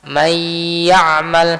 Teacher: Artinya nunnya diidghamkan ke huruf ya, dimasukkan ke huruf ya. Di sini kita ada gunnah juga, masih ada gunnah di sana. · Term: idgham bil gunnah